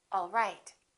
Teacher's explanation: My pitch goes down at the end for a statement